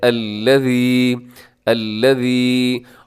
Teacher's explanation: الذی نرمی کے ساتھ سیٹی اس میں نہیں ہے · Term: ذال